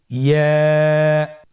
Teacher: ইয়া উচ্চারিত হয় জিহ্বার মধ্যখান তার বরাবর উপরে তালুর সঙ্গে লাগিয়ে উচ্চারিত হয়। আমরা জিহ্বার মধ্যখানটাকে উপরে তালুর সঙ্গে লাগিয়ে উচ্চারণ করি ইয়া।